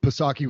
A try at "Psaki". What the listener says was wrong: The P is silent. Sake, like